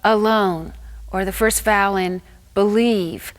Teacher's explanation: that floats in the middle that's what the indistinct vowel is a schwa happens in an unaccented syllable the schwa doesn't have any clear identity it's just a push of breath